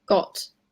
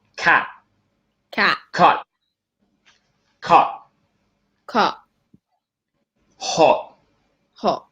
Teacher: So everywhere in the end, if T is in the end, then you don't really pronounce it. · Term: glottal T